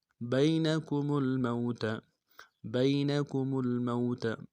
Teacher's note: با کو یا کے ساتھ ملانا ہے، یا لین بغیر کھینچے پڑیں گے · میم کو لام کے ساتھ ملانا ہے، غنہ نہیں ہوگا لام ساکن میں